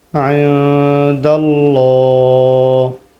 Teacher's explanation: نون پہ اخفا کریں گے، لام موٹا ہوگا اور یہاں وقف کریں گے۔